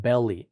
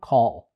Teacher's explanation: the tip of the tongue touches the alveolar Ridge but the air actually escapes through the sides of the tongue and that's why it's called a lateral and then you also